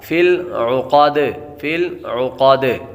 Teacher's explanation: فی العقاد، فی العقاد، لام باریک اور عین کی آواز نکالیں گے، قاف حروف مستعلیہ میں سے ہے، جب وقف کریں گے دال ساکن ہو جائے گی اور دال حروف قلقلہ میں سے، یہاں پر خوب قلقلہ ظاہر ہوگا